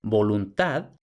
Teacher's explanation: como vemos con el fonema oclusivo bilabial sonoro